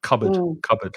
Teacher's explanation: that o a in the second syllable is the uh the schwa sound